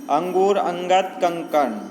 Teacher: यह स्वर के बाद आने वाला व्यंजन होता है जिसकी ध्वनियाँ नाक से निकलती हैं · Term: अनुस्वार